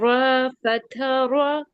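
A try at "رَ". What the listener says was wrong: अच्छा, रॉ जब आप बोल रहे हैं ना तो आपने रा नहीं कहना, उसको रॉ ही कहना है।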